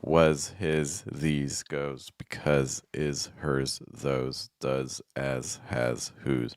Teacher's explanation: very high frequency words that end on s where the s will be voiced